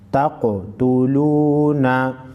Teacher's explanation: ता क़ाफ ज़बर तक़, ता पेश तो तक़ तो, लाम वाव पेश लू, नून ज़बर ना, तक़ तुलूना। क़ाफ पर क़लक़ला करेंगे और मोटा पढ़ेंगे।